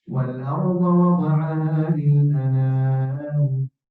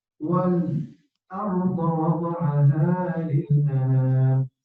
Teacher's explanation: سكت، لأن الهمز هنا متحرك وقبلها سكون